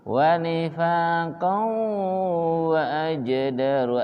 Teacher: di idgham bi gunnah di hidung